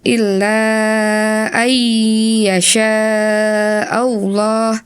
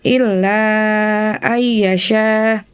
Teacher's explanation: Ghunnah dibaca dengan menahannya selama dua ketukan, disertai dengan suara sengau. Tadi, kamu tidak menahannya cukup lama dan terdengar seperti hanya sebuah shaddah, ya.